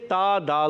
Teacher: تا کا مخرج زبان کا سرا اوپر کے دانتوں کی جڑوں سے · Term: حرف نطعیہ